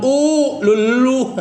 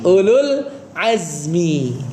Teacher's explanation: Un-nya satu harakat, lulnya langsung ke lamnya ya.